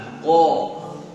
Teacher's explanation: Qi, qu, ako ya, itu huruf qaf. Dia punya sifat asyiddah, tidak keluar napas ya, tidak berjalan dan tidak keluar napas. Tebal, ko ya, tidak disenyumkan, tidak ke, tapi ko.